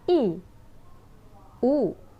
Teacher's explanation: U is you can clearly see and feel is a rounded vowel, whereas E is not a rounded vowel. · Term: roundedness